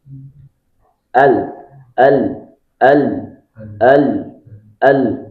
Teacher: Jadi sisi tepi lidah semuanya itu diangkat posisinya lebih mundur, lebih rendah daripada th, dal, dan ta. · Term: huruf lam